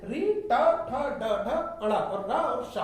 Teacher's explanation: मूर्धा से उच्चारित होते हैं। यदि हम जीभ के अगले भाग को पकड़ लें और हम ये वाली लाइन बोलना चाहें और जीभ को पलटा लें या जीभ कुछ ना करें तो हम मूर्धा के शब्द जो मूर्धा से उच्चारित होते हैं उनको हम नहीं बोल सकते हैं।